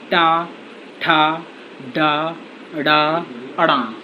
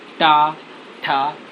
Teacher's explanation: इसको हम मूर्धा शब्द कहते हैं। टा, ठा, तो जीभ हमारी एक तो मुड़ रही है, मुड़ने के उपरांत ये तालु को स्पर्श कर रही है, इसलिए ये शब्द जो होते हैं टा वर्ग के सारे मूर्धा शब्द हैं।